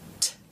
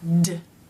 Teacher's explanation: These two sounds are paired together because they take the same mouth position. T is unvoiced meaning only air passes through the mouth. And D is voiced meaning D. You make a noise with the vocal cords. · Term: stop consonants